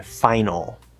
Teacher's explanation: it might be a schwa with a half l vowel to make it an l colored schwa like in final